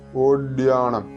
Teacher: വായയുടെ കടഭാഗം കൊണ്ട് ഉച്ചരിക്കേണ്ട ഡ ആണത് തൊണ്ട ചേർക്കരുത്